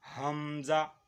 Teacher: یہ حمزہ جو ہے نا حلق کے آخر سے جو سینے کی طرف سے ہے وہاں سے نکلتا ہے حمزہ۔ ہا یہ دونوں ایسے الفاظ ہیں کہ جو حلق میں سے ادا ہوتے ہیں۔